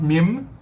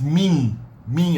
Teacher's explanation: the final m is only a nasal twang in the end of The Vowel it's on a full m with the lips no no not